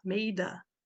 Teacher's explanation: eu tenho uma palavra terminando com consoante e mais uma vogal. Eu vou juntar, então, o made com A.